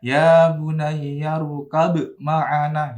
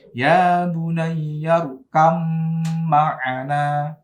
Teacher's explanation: Nah, tapi ba-nya dilebur ke mim, ya. · Nah, ini namanya idgham mutajanisan. Maka ba-nya dibaca mim, ya. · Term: idgham mutajanisain